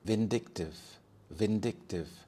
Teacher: The stress is on the second syllable, so we have vindictive.